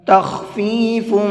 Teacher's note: یہاں یہ خا ہے تو خا کو پر کر کے پڑھیں گے